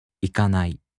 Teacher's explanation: In the flat-type verbs, even if they turn into the negative form, they have no accent. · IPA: [ikanai]